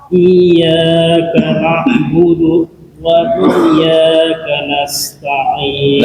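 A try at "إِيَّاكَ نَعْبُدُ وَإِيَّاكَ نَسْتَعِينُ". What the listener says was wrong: Nah, itu budunya jangan sampai ada jeda tuh. Iyyaka na'budu wa iyyaka na'budu wa iyyaka nasta'in.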